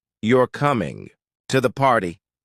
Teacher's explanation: For instance, you're coming to the party with rising intonation becomes a question even without changing the word order